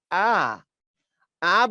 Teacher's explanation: আ বললে দেখো জিব্বার নিচের দিক চলে গেছে